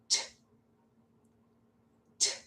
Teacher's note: It's only the air coming out of your mouth that makes the sound. Your vocal cords don't vibrate.